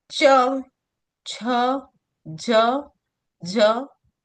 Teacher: च वर्ग जिसको तालवय बोलते हैं जो तालु की सहायता से बोलता है। अपने जीभ के ऊपर का जो हिस्सा होता है उसे हम तालु बोलते हैं। · इसमें जीभ हमारी ऊपर के हिस्से को टच करती है, इसके लिए इसको तालवय बोलते हैं